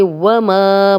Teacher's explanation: ما الف مدہ ہے، دو حرکات لمبا کریں گے، خالی الف، پیچھے میم پہ زبر ہے۔